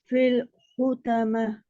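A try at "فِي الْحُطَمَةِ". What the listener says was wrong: फिल फिल फिल नहीं है, फिल नहीं है, क्योंकि जे जेर को मजहूल नहीं पढ़ना, बीमारी की तरह पढ़े, हमारे की तरह नहीं पढ़े। फी पहले कहे, फी फी फी फी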